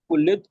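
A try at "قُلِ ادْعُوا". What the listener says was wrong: ऊ, लंबा करना है, कुलिदू।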